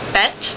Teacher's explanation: [ɛ] is slightly more closed. It's in the middle